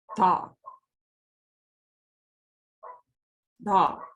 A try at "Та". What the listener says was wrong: Она не да, она та низкая просто.